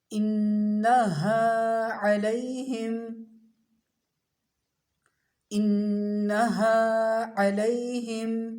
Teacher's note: نون مشدد ہے، غنہ کیجئے، ہا کی آواز بھاری، عین حلق سے